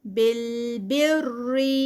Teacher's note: بالبر یہاں پہ نو اسٹریچ. را جو ہے یہاں پر لائٹ ہوگا کیونکہ را جو ہے اس سے پہلے زیر آ رہی ہے